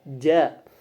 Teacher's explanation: Majdah itu gabungan antara letupan dan juga gesekan. Kemudian juga dia mahmus dalam pita suara. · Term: majdujah